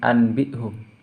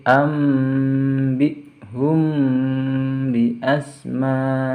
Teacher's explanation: Di sini ada huruf nun sukun bertemu dengan huruf ba. Ini dinamakan iklab, jadi harus diganti dengan suara mim. Bukan anbihum, tapi ambihum bi asma'ihim.